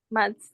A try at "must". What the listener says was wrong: Mas. Ada T-nya di belakang, bukan T-nya duluan. Bukan mats, tapi mas. Mas. Ya, bukan mats. Mas.